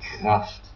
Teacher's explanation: The R is in German words like in the throat